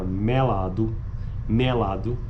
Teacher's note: a pronúncia de vogais médias pretônicas como ocorre na palavra melado pronunciadas com vogais abertas do Nordeste